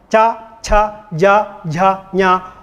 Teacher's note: What are group cha sound? They are palatal sounds, cha, cha, ja, jha, nya.